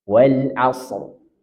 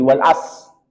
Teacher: wajib tebal tetap rnya dia punya hak untuk dibaca walaupun setengah Wal asr dia tebal dan jangan sampai dihilangkan menjadi Wal as